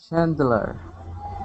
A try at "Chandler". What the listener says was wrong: Good, good.